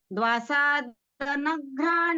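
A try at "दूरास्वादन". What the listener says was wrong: नहीं है, द्वा नहीं है, द्वा नहीं है, दास्वादन है, आप द्वा साधन बोल गए हैं। हाँ हाँ हाँ, द्वा नहीं, दा।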